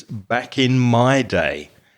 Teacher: my parents used to stress the my because usually that's the word that's not stressed very much